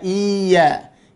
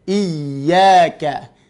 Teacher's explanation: Irtifa'us sawti qalilan mimma jawarahu minal huruf, meninggikan suara sedikit daripada sebelumnya. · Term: nabr